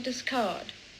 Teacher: So discard with a clear example of R deletion.